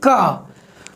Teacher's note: जब आप का बोलते हैं तो बिल्कुल यहाँ गले के पास आपकी जीभ आपके तालू से टकराती है और वायु थोड़ी सी अवरोधित होती है